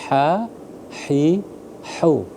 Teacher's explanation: Yang hak tipis, hak kecilnya ha, hi, hu. Ha, hi, hu di pangkal tenggorokan.